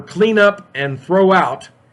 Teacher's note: the phrasal verbs in that conversation were clean up and throw out, and you can hear how one word is linked to the next word